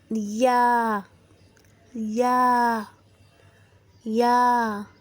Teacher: جب زبان کا درمیانی حصہ اوپر والے تالوں سے لگے تو یا ادا ہوتا ہے